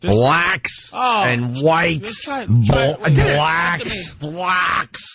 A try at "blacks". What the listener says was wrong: Just, you're saying it like brack almost. B-L-A-C-K-S. Just say black.